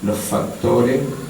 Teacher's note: una F larga, pero que tiene un poquito de voz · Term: geminación